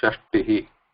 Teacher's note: Here it is Alpa Prana Ta, not Tha. So just keep that in mind while pronouncing and also writing, because while pronouncing, writing, it should not become Shashti.